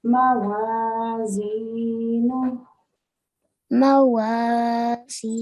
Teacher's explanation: This is a longer vowel. So this is a 2 second elongation. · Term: 2 seconds elongation